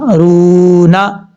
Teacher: واو مدہ ہے۔ ایک الف کی مقدار اس کو لمبا کریں گے